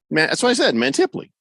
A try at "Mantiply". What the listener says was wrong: You said Mantiply. You've got the emphasis on the wrong syllable.